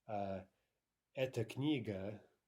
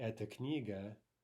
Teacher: because of the vowel reduction, right, those two words, eta, feminine, and eta, the neuter form or the pointing word, sound exactly the same